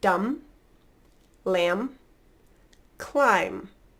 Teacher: I'm closing my lips for the M and stopping there I'm not releasing a B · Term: silent B